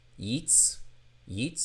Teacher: So, it's y i and then tsadi is the t z, but it has a noisy s sound · It's coming to a glottal stop. Yits. So, that's a shva nach.